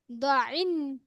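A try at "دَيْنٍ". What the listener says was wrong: দ না আপু, এটা দাল দাল দাল জবর দা। আইন আইন।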